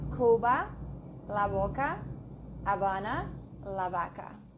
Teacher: At the beginning of a breath or following LMN, softer elsewhere. Okay, if it's not following LMN, it's very soft.